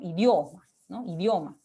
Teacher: Ahora, esto de acá se denomina semiconsonante porque está al costado de una vocal, ¿no?, en este caso una vocal abierta, y lo que se quiere dar a entender con ello es que la mayor fuerza de voz, ¿no?, o digamos la abertura mayor que se da en esa sílaba está representada por la O